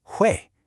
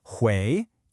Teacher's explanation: that sharp falling fourth tone